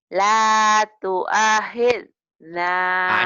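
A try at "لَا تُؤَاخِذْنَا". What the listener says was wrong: A-nya panjang. La tu'akhilna.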